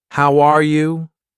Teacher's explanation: when I say, How are you? my voice goes up at the end. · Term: Intonation